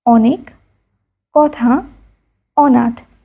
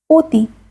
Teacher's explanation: সাধারণ উচ্চারণ অ কিন্তু পাশের ধ্বনির প্রভাবে কখনো কখনো ও এর মত উচ্চারিত হয়। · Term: অ বর্ণের ও উচ্চারণের